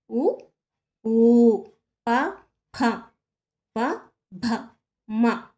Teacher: ఓష్ట్యములు అంటే పెదవుల నుంచి పుట్టినవి.